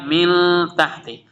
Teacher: یہاں پہ نون کا ساؤنڈ کلیئر ریڈ ہو رہا، اظہار ہو رہا